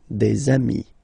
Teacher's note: if you make the liaison, so the link between the two, you will get des amis